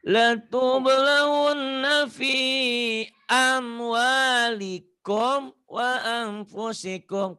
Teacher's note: Komnya jangan ditahan. Idhar sapawi.